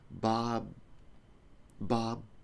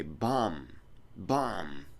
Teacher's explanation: the difference here is with the M, the air comes out of your nose. So if I do an when you stop the air, the sound has to stop.